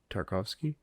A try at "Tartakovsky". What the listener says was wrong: I think there's another syllable in there.